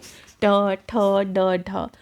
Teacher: मूर्धा या कंठ के थोड़ा ऊपर से होने वाले उच्चारण मूर्धन्य कहलाते हैं